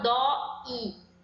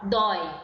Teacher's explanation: É um encontro de duas vogais e que ficam na mesma sílaba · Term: ditongo